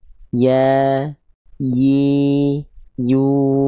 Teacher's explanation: tengah lidah diangkat tapi dia tidak menyentuh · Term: huruf ya